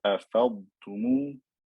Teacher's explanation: And then in the word أَفَضْتُمُ, make your dad clear. Don't merge it completely into the ta.